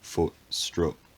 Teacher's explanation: speaker would pronounce those words to rhyme with each other because the vowel is the same for them in both words